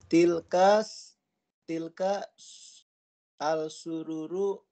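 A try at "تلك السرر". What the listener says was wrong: Sururu. Alif lamnya syamsiyah. Tilkas sururu.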